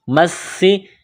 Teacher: سین میں سیٹی کی آواز پیدا کریں گے